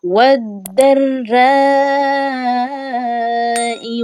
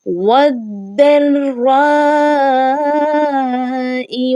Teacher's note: یہاں پر مدہ اور اس کے بعد حمزہ کا اسی کلمے میں آنے کی وجہ سے یہ جو مدہ ہے یہ مد متصل ہے